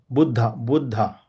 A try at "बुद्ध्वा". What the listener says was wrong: No, it is Buddhva. Actually, because of the font style, there is the, then below that there is the, and below that there is v, small v.